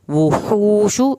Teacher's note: वाव की पेश है तो होंठों को गोल करके पढ़ेंगे ताकि वाव की पेश सही अदा हो। शीन की पेश को लंबा नहीं करना।